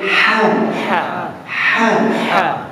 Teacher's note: apabila kita sebut ha di tengah al-halquum maknanya kena ada angin keluar kalau tidak ada angin keluar tidak ada hak salah okey faha